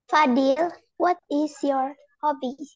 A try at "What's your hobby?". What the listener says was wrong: Let's try and make it fluently. Instead of what is your hobby, what's your hobby?